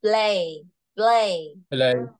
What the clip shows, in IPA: pleɪ